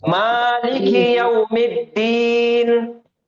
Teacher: جب رکیں گے نون کی زیر کی حرکت چینج ہو کے سکون آ جائے گا